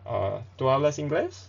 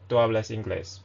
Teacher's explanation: we can raise our tone at the end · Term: rising tone